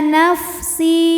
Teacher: Illa nafsi si dihukumi dengan mad thabi'i dzahiri sebab ada ya sukun yang sebelumnya berbaris kasrah maka sin panjang dua harakat